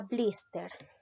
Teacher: la mayor fuerza de voz recae en la sílaba bliss por lo tanto es una palabra grave